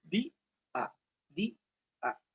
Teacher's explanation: tenemos una vocal cerrada más una vocal abierta, pero se separan